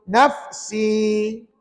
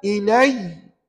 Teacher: Nafsi tadi mad asli berhenti 2 harakat. Tapi ilai tak ada mad apa-apa.